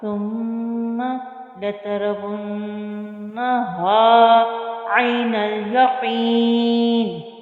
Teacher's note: फिर आइन को वस्ते हलक से अदा किया और नून लाम के साथ मिल रहा है, अलिफ साइलेंट रहेगा। · कॉफ को मोटा पढ़ेंगे, पीछे आपको इसकी एक्सप्लेनेशन पूरी मैंने दे दी है। और यहाँ पे वफ़ की सूरत में फिर 3 से 4 अलिफ की मिक़दार के बराबर खींच कर वफ़ करेंगे।